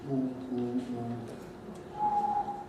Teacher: The Japanese vowel, u, is different from the English one because in the English one we use our lips and protrude them a bit. Japanese u sometimes has sort of lip u action of some kind, but not like that of English.